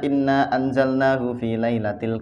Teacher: cara membacanya itu Ditekan dengung ditahan dua harokat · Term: ghunnah musyaddadah